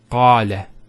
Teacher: Notice the elongation of the A sound. Qala. Not qala, qala. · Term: long vowel